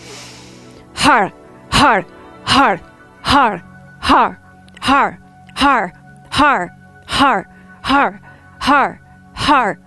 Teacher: So if you can roll your R's, you'll do ha with the rolled R. You're just going to take your hands, make them into fists, and then you're going to press them out like this as you say har, nice and strong.